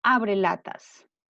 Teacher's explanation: Acá, esta palabra, al unirse en la palabra abre latas, se ha convertido en una palabra grave o llana, que lleva la sílaba tónica en la penúltima sílaba, la sílaba la